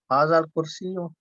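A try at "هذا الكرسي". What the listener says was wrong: देखिए दोबारा पढ़िए, गौर से पढ़िए, या तो आप लोग बीच में लफ्ज खा जाते हैं, इससे मैं कंफ्यूजन हुई। अलग अलग करके पढ़ लें, पढ़े अलग अलग पढ़ लें। मिला के पढ़ेंगे तो बन जाएगा हाजल कुर्सियो।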